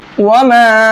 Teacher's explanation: یہ مد منفصل ہے، اس کو 1 سے 3 الف کے برابر کھینچتے ہیں۔ 1 سے 3 الف کے برابر کا مطلب 1 سے 3 سیکنڈ تک اس کو کھینچ کر کے پڑھتے ہیں۔